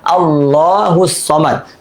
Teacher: আল্লাহ শব্দের তাসদিদের ডানে জবর অথবা পেশ থাকে, আল্লাহ শব্দের লামকে পুর বা মোটা করে পড়তে হয়